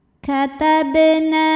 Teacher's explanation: Karena huruf qalqalahnya ba, sukunnya sukun asli dan ada di tengah bacaan. Maka ba-nya dipantulkan dengan pantulan yang kecil. · Nah, hukumnya adalah mad tabi'i zahiri karena ada alif yang sebelumnya berbaris fathah. Maka huruf nun kita panjangkan 2 harokat. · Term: qalqalah sugro